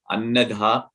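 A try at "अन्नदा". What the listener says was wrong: Annada. It's not dha. I think it's Annada probably.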